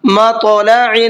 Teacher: تا کے اوپر جزم ہے، اس کے اندر قلقلہ بھی کریں گے اور ساتھ ساتھ اس کو پر کر کے بھی پڑھیں گے